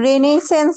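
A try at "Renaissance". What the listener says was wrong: এটার উচ্চারণ হচ্ছে রেনেসা। ফ্রেঞ্চ, ফ্রেঞ্চ শব্দ। এগুলোতে প্রচুর অতিরিক্ত আসলে অ্যালফাবেট থাকে, উচ্চারণ হচ্ছে রেনেসা।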